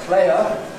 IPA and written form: ˈpleɪə (a player)